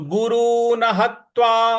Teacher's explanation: ह के बाद जो त है इस पर हमको आघात देना है